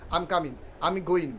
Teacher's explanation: যেমন প্রভু যে আই এম কামিং, আমরা কি বলছি কাম ইং, এই যে নাকের মধ্যে শব্দ হচ্ছে দেখেন নাকের মধ্যে শব্দ হয়, কিন্তু তারা লাস্টে জিটাকে বাদ দিয়ে দেয়, আম কামিং, শুধু এন উচ্চারণ করে, জি উচ্চারণ করে না